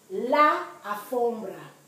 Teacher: in alfombra, the first letter A is not the part that's stressed